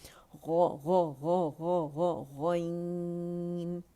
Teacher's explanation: जहाँ ज़बान की जड़ है, तो वहाँ से ये अदा होता है, ज़बान की जड़ ऊपर जाके नरम तालु से लगेगी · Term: गैन